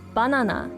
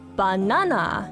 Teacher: banana with only a slight shift in pitch and not banana which would be accentuating using volume and length as well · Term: pitch accent